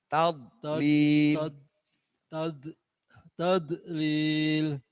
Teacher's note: Dot itu dua sisi kanan kiri lidah. Dia menyentuh langit-langit rongga.